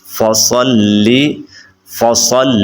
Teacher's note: بعض لوگ سین پڑھ بیٹھتے ہیں یا ثا پڑھ بیٹھتے ہیں تو سین اور ثا نہیں پڑھنا بلکہ صا پڑھنا ہے